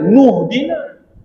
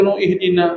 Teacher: Bila ada ilmu, oh ini hamzah wasal, dia memang takkan berbunyi. Bila kita sambungkan dengan nu, dia kena baca huruf selepas dia. Hamzah wasal tak ada bunyi.